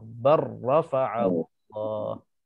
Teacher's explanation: lam dengan ra ini, kedua-dua huruf ini hampir makhraj. Tempat keluarnya sama tempat. Jadi dalam bacaan kita kena idgham. · Jadi tanpa kita sebutkan lam, terus masuk ke dalam ra. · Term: idgham mutaqaribain